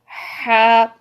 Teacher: ہا میں ٹھنڈی سانس ہوتی ہے، ٹھنڈی سانس والی ساؤنڈ سی ہوتی ہے